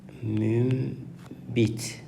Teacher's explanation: Əgər n samitindən sonra m, b samitləri gələrsə, n samiti m kimi tələffüz olunacaq.